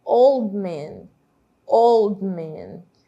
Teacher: Na verdade, ele soa como se o D não existisse, né? A gente não fala old man, old man. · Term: elisão